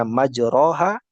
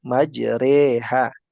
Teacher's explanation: bacaannya dimiringkan. Yang seharusnya majroha menjadi majreha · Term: imalah